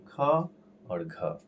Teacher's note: प्रत्येक वर्ग का दूसरा, चौथा यानी ख और घ। ख और घ क्या हो जाएगा? महाप्राण हो जाएगा।